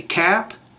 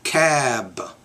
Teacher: when the B's at the end make the vowel a little bit longer